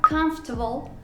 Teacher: fíjate que estamos ignorando la segunda O, no tiene ningún sonido, y que la R que lo acompaña tampoco suena